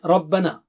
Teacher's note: را موٹا ہے، با باریک ہے، ربون نہیں، ربنا، ٹھیک ہے، را موٹا، اس کے بعد نا مد ہے وہاں پر.